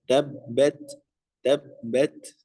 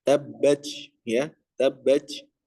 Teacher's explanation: ketika disukunkan huruf ta ini ya, ada sifat namanya hamas. Ya, hamas di sini apa? Keluarkan udaranya sedikit.